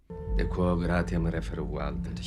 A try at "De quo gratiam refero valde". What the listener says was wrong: De quo gratiam refero valde. Sounds pretty good. This actor, like pretty much all of them, does not observe correct vowel length. That is the most critical part about Latin phonology because all of the grammar and the word structure is based around the lengths of the syllables.